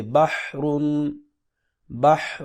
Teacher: چوتھا گروپ ہے ہا اور ہا کی آواز میں فرق۔ ہا کی آواز درمیان حلق سے رگڑ کھا کر نکلتی ہے